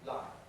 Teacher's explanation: That's a clear L because it's before a vowel.